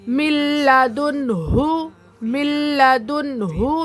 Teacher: میم سے لام کو ملا دے رہے، نون نہیں پڑھ رہے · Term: ادغام لام